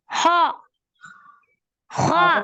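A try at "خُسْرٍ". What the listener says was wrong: ஹா வரணுமே. அவ்வளவு விஷயம். நீங்க ஹான்னு சொல்றீங்க, ஆனா ஹாட உச்சரிக்கிறீங்க இல்ல.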